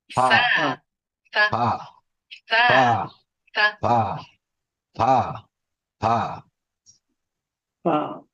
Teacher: উপরের দাঁতের আগা নিচের ঠোঁটের ভিজা অংশ থেকে। আমাদের প্রত্যেকের ঠোঁটের ভিজা অংশ আছে না, এখানে লাগিয়ে দিয়ে উচ্চারণ করতে হবে।